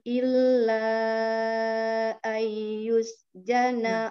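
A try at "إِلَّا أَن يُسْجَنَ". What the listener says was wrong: Bomnya, tahan dulu, Om. Ayyus. Kurang lama.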